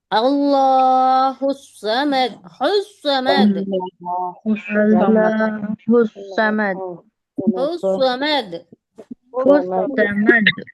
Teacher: जुबान की नोक और ऊपर नीचे के चारों दांतों के किनारे से स्वाद आता है।